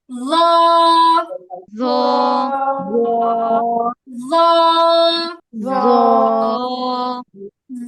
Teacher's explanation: জিহ্বার আগা সামনের উপরে দুই দাঁতের আগার সাথে লাগিয়ে